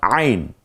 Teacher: কণ্ঠনালীর মধ্যখান থেকে উচ্চারিত হয় আইন।